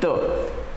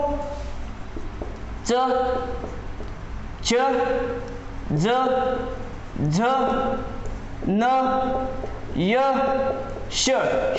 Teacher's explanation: आपल्या जिभेचा शेंडा दाताच्या समोरच्या दाताच्या टोकाला टेकतो किंवा स्पर्श करतो, म्हणून त हे दंत्य आहे